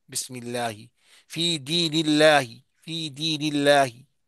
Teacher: لفظ اللہ سے پہلے حرف کے نیچے زیر ہو تو باریک پڑھا جائے گا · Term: اللہ کا لام